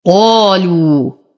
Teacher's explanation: نفخم القاف بأعلى درجات التفخيم فهي مفتوحة وبعدها ألف. لو، واو ساكنة ما قبلها مضموم فهو من الطبيعي حركتين.